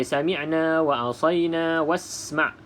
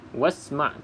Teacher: kalau kita sambung wa dengan isma', bermaksud kita baca wasma', tak perlu baca hamzah wasal. Bila kita wasal, barulah kita tak perlu sebut huruf hamzah.